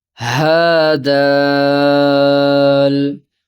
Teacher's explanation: دال کو زیادہ لمبا 3 حروف ہیں، ہا کو کم لمبا 2 حروف ہیں